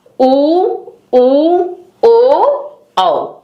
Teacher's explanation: जिन वर्णों के उच्चारण में हमारी जीभ पीछे की तरफ चली जाती है उसको पार्श्व स्वर कहते हैं।